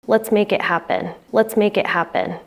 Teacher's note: Final consonants link smoothly into the next word. So make links to it to sound like kit. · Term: linking